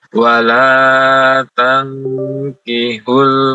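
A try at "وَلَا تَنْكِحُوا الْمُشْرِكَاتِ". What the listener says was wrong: Wala, lamnya jangan terlalu panjang.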